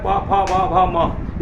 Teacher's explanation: ये पांचों कहाँ से बोल रहे हैं? ओठ से बोल रहे हैं। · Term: पवर्ग